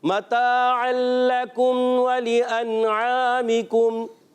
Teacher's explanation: عین کی ادائیگی کلیئر رکھنی ہے, حرف مدہ ایک الف کھینچ کر ادا کریں گے, آخر میں کاف کو باریک رکھنا ہے اور میم کو ساکن ادا کریں گے